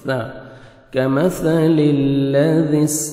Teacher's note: ذال کو نرمی سے ادا کریں گے، سین سیٹی کی آواز آئے گی